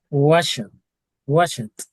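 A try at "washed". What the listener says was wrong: But you are not saying T. You are telling me wash it. It means that you are telling me ED.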